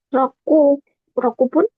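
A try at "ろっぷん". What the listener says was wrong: Rob pun, bukan roku pun ya. Ada su kecilnya. Rob pun.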